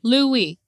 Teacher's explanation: in ancient Hebrew, it would have been more of a W sound, not a V sound, Lewi. In modern times, we say Levi, but, I'm pretty certain it was pronounced Lewi.